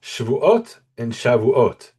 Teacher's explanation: And here the emphasis is the same. The emphasis is on the end of the final syllable, ot.